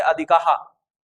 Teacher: अधिक को अधिकाह लास्ट में ह लगा देंगे।